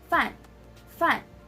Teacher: So as you can see, it has the fourth tone. So we're gonna sound like we're exclaiming.